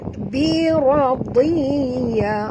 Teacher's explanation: ra ni juga baca tebal, ra baris atas, ra tafkhim namanya. Radiya, huruf dad walaupun di baris bawah kita kekalkan makhraj tebalnya.